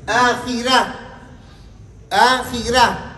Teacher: کسر آ جائے تو را کو باریک پڑھ دیں